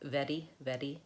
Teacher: So either it's a rolled R like r, red, or it's a tapped up R, like it sounds kind of like a D in American English · I'm either moving it very quickly to roll it, or I'm lifting it up and tapping it and releasing it to make that flap D, R, like very, very.